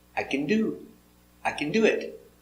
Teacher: In these examples, the action is the more important word, not the helper. The action do has the stress.